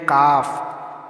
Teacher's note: दो है कौफ काफ कौफ जबान की जड़ और तालु के नर्म हिस्से से अदा होता है। फिर है काफ जबान की जड़ और तालुक के सख्त हिस्से से अदा होता है